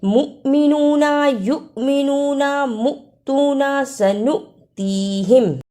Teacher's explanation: والمؤمنون، اسے والمؤمنون نہیں پڑھنا، میم پیش حمزہ مؤ، جس حمزہ پر جزم ہو اس کو تھوڑا جھٹکا لگا کر پڑھتی ہیں